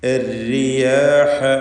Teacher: വീണ്ടും കസ്റുള്ള റാ തർഖീഖ് ചെയ്യുക, നേർപ്പിക്കുക.